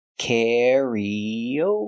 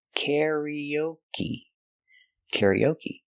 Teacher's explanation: we put the stress on the first syllable